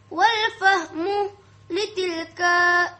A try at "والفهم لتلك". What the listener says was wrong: Tak ada ekor. Litilka.